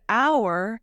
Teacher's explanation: In the word hour, the H is not aspirated